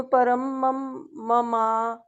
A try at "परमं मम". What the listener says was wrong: ममा नहीं है ना, देखो ममा तो हो गया आ की मात्रा यहाँ पर यहाँ पे क्या है, मम, मम। आप इनको अलग अलग पढ़ लो, एक म पहले पढ़ो, ऐसे करके म, ठीक